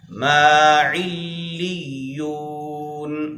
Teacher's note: لام پر بھی شد ہے، یا پر بھی شد ہے، دونوں پر ٹھہریں گے